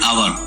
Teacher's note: As H is silent here, hour starts with a vowel sound.